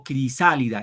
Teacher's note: Igual cuando digo crisálida, el acento va en sa.